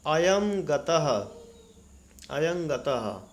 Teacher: तो नासिका उच्चारण स्थान है इनमें से ङ का। तो अनुस्वार का उच्चारण स्थान नासिका, ङ का उच्चारण स्थान नासिका, इसलिए अनुस्वार के स्थान पर ङ हो गया।